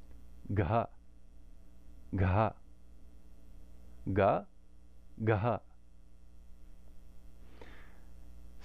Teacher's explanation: we just do ga and add a lot of air. Ga, ga, ga, ga. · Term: soft aspirated